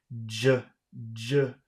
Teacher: If you say j and you cover your ears, you'll feel your whole head vibrate.